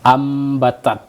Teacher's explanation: membalikkan bunyi nun mati kepada huruf yang sesudahnya seolah seperti mim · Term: ikqlab